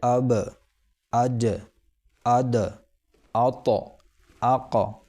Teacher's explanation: زبان قلقلہ کے حرف کے مخرج پر لگ کر اچٹ جائے گی، جیسے گیند زمین پر گر کر اچھل جاتی ہے۔ جیسے اب، اج، اد، آت، آق، یہ تو حرف ساکن کی مثال تھی۔